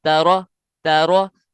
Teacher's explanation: را کے اوپر جو زبر ہے اس کی وجہ سے را موٹا ہے